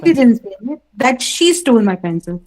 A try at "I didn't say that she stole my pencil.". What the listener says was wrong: No, you focused on she. You need to control your intonation.